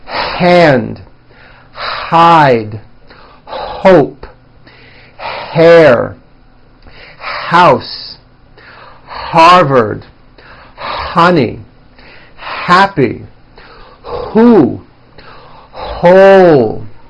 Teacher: many foreign speakers tend to drop that air sound when a word begins with the letter H. For example, instead of saying the word hand, they would say and, like my right and. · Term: H sound